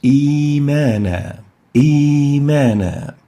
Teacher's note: Second example, ya with sukun. The second hamza has been exchanged with a ya because of the kasra on the first hamza, and it should be extended for 2 units.